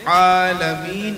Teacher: আইন গলা চিবিয়ে কণ্ঠের মাঝখান দিয়ে উচ্চারণ করতে হবে